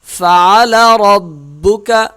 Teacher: را موٹی ہو گئی یہ، اور با کے ساتھ جو ہے سختی کے ساتھ مل جائے گی۔